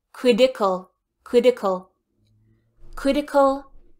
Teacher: my American English pronunciation that T becomes a D in my mouth